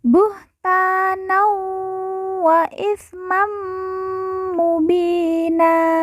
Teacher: Nan bertemu dengan huruf wawu, maka tanwin dileburkan langsung masuk huruf wawu, kemudian ditekan, ditahan 2 harokat dan didengungkan.